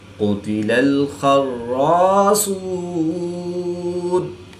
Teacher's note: صاد، خا اور قاف حروف مستعلیہ میں سے ہے تو ان کو اس لیے پر یعنی موٹا پڑھیں گے۔